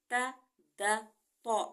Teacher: ज़ुबान की नोक ऊपर वाले दांतों की जड़ों से लगेगी, और दबा के हम लगाएंगे तो ता दा तो अदा होंगे।